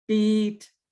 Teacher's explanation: the vowel is longer there's my tongue is gliding and in the tenseness produces a smile the smiley sound · the ee in american english which is gliding so it's a high front tense my muscles are tense the vowel is longer there's my tongue